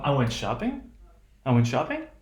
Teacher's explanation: we were going to have rising intonation which means we're not done